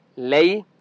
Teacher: कुतिबा अलैकुम, अलई आइन की आवाज़ बरीक हलक से निकालेंगे। लई या लीन है, लाम को लंबा नहीं करते,